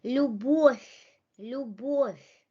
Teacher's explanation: O is under stress, and the V in final position becomes F. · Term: become voiceless